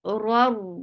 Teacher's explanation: This is idgham without gunna, so you're not keeping the sound in your nose